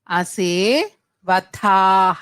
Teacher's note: రెండో థ మహాప్రాణం థ అండి